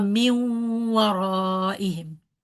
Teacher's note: So when it's in complete merging, here in the case of waw and a ya, I don't touch the noon's articulation point. I touch the waw straight away.